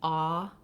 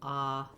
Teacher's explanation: in some places in the US, there's not a real difference between ah, the rounded vowel, and ah, the unrounded vowel. So you can get away with either, especially in this word where it's not, doesn't have a lot of stress.